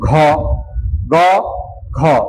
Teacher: গ তে অল্প বাতাস যাচ্ছে ঠিক আছে এজন্য এটা অল্পপ্রাণ আর ঘ তে বেশি বাতাস যায় বেশি বাতাস যায় বিধায় এটাকে বলা হয় মহা প্রাণ বুঝতে পেরেছ